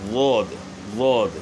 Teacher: زبان کی کروٹ جو موٹا حصہ ہے زبان کا، بغلی کنارہ زبان کا، اس کو جو ہے نا ہم نے اوپر کی جو داڑیں ہیں داڑھوں کی جڑ کے ساتھ لگانا ہے۔ زبان کی کروٹ بائیں طرف یعنی لیفٹ سائڈ پہ اوپر کی جو داڑیں ہیں ان کی جڑ کے ساتھ لگائیں گے۔ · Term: ضاد